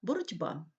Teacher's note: глухі перед дзвінкими вимовляється дзвінко внаслідок уподібнення за дзвінкістю